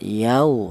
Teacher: Kalau yang wawunya mati untuk lin ya ini cukup lunak saja tidak dipanjangkan yau seperti itu.